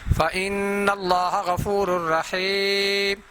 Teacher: اس نون کے اوپر غنہ بھی کرنا ہے اور نون مشدد ہے بیٹا، اور لفظ اللہ کو موٹا ادا بھی کرنا ہے